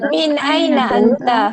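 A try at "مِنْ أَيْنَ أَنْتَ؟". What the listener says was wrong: কথার মধ্যে একটা ঢং থাকতে হবে। কোশ্চেন করছেন, যদি কোশ্চেনের মতো না হয় তাহলে হইলো মিন আইনা আনতা।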